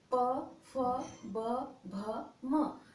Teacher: ये दोनों ओठों को स्पर्श करता हुआ मुख से बाहर आता है। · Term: प वर्ग